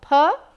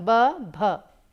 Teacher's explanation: Ph is bilabial plosive aspirated, while bh is bilabial plosive voiced aspirated.